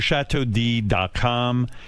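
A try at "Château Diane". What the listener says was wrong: Why are you saying D and it's Diane?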